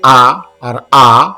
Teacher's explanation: the sound comes from the bottom of the throat somewhat very similar to ka. Therefore, they are called guttural or gantya.